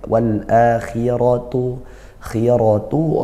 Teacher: khi ini huruf tebal tapi karena dia kasrah maka berkurang tebalnya